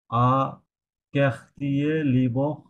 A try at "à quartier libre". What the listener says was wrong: লিব অফ না লিব, আপনি লিব বলছেন এল ই এবং বে, রাইট লয়রসি ব লিব, ওটা জাস্ট আরটা অ্যাড করেন লিব, লিব